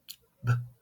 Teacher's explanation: You can feel the puff of air in your hand, and the B, B represented by the letter B is voiced, and you can feel the vibration over here in your throat because the vocal cords vibrate